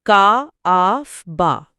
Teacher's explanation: एक लंबा नोट और फिर दो छोटे नोट।